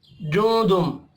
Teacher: नून साकिन के बाद दाल है, इख्फा हकीकी होगा